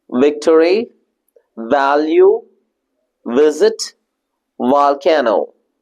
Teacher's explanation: when you pronounce all these sounds you will definitely have a vibration in your throat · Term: voiced consonants